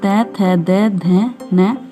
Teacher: तै वर्ग में तै, थै, दै, धै, नै ये दांतों से बोले जाते हैं